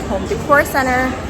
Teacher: I'm saying it in the American style where you drop the T when it comes after an N in an unstressed syllable, not every time. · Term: dropping the T